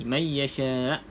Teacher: Okay, pastikan tuan-tuan dan puan berhenti pada perkataan yasha ni, bunyikan hamzah ni. Bukan bunyikan baris, tapi sukun hamzah ni kena bunyi.